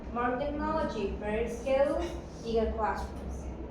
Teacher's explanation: The voice usually rises in the first words, like when I say more technology, in the list and falls on the last word. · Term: intonation in list